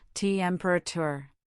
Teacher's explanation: temperature has stress on the first syllable, temperature. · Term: word stress